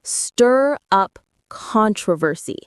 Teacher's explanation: The stress is on stir and the first syllable of controversy.